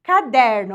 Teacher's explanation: a penúltima sílaba é a mais forte